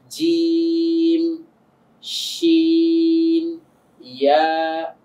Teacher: জিহ্বার গোড়াটা উপরের তালুর সঙ্গে গিয়ে লাগবে। তো যখন আমি গোড়াটাকে তালুর সঙ্গে গিয়ে লাগাচ্ছি, আগাটা কিন্তু নেমে যাচ্ছে। জিম শিন ইয়া, তো জিম বলছি একটু শক্ত হচ্ছে আওয়াজটা, তারপরে শিন বলছি আরেকটু আওয়াজটা শক্ত থেকে নরমের দিকে চলে যাচ্ছে, ইয়া বলছি সেখানে কিন্তু আওয়াজটা আরেকটু নরমের দিকে চলে যাচ্ছে। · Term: সিফাত